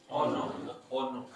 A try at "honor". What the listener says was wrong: The H is silent.